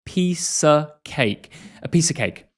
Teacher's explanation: We say a piece of cake, a schwa sound